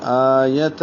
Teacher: آ کو 2 حرکات لمبا کریں گے ایک الف کے برابر، یا کو لمبا نہیں کریں گے، یہ چھوٹا ہے، اور تاوی نرمی اور جلدی سے پڑھیں گے.